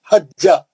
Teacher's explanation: خلخلہ ہے تو مگر سکون نہیں ہے نا اس میں. جیم دو بار پڑھیں گے، خلخلہ نہیں کریں گے